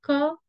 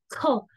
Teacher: तो व्यंजन का उच्चारण करते समय मुख से अधिक हवा निकल रही है, जैसे क आराम से हम उच्चारित कर रहे हैं, ख तो ख के साथ ह भी आ रहा है और थोड़ा सा समय भी ज्यादा लग रहा है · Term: महाप्राण